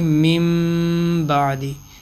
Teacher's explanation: ٹھیک ہو گیا کہ نون ساکن کے بعد اگر با کا حرف آ جائے گا تو نون ساکن کی آواز کو میم میں تبدیل کر کے پڑھیں گے، اور چھوٹا سا میم بھی لکھا ہوتا ہے۔ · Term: اقلاب